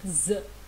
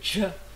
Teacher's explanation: Dans une certaine prononciation locale en Inde, la prononciation du je c'est z.